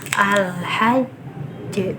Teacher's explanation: jadi harus disempurnakan tasydidnya beda dengan qolqolah kubro yang tanpa tasydid